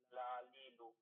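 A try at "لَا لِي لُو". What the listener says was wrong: একটু দ্রুত পড়া মানে এই যে না এই যে প্রত্যেকটা একটু টান টান দিয়ে পড়েন লালিলু এরকম না লালিলু নানিনু নানিনু নানিনু নানিনু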